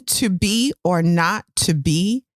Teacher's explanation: we're stressing that verb to be or not to be um we're stressing the verb the contrarian word not and then the verb again